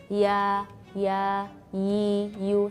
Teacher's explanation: sifat infitah, yaitu sebagian besar dari permukaan lidah tidak bertemu langit-langit